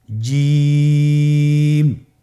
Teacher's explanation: জিহ্বার মধ্যখান তার বরাবর উপরে তালের সঙ্গে লাগিয়ে উচ্চারণ করতে হয়। আপনারা জিহ্বার মধ্যখানটা লক্ষ্য করুন এবং তার বরাবর উপরে তালের সঙ্গে লাগান।